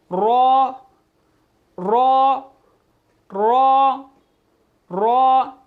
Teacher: रॉ जो है ज़ुबान की नोक और मुकाबिल के ताल्लुक से अदा होता है, यानी कि ये ज़ुबान की नोक ताल्लुक बिल्कुल करीब से लगेगी तो फिर ये रॉ अदा होगा।